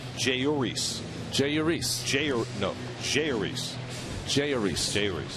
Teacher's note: So it's like there's no accent anywhere on any syllable. But I was surprised because usually J and, you know, in Spanish is an H sound, but he goes with the J sound.